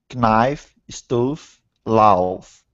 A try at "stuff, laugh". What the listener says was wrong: Now, your F sound was perfect. The only problem, it was a couple of vowel sounds, slightly dodgy sounding ones here.